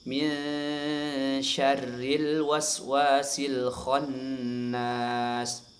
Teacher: rnya dibaca tipis ya, karena dia berbaris kasrah ya. Dibaca tipis.